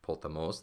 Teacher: So here you just have a short syllable, os, and this accent, potamos, the accent is on the last syllable, the ultima. But it's short, so we can't accentuate, we can't emphasize that ending at all.